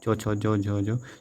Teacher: व्यंजन भी कहा जाता है दूसरा होता है स्पर्श संघर्षी व्यंजन च वर्ग के उच्चारण में वायु कुछ घर्षण के साथ निकलती है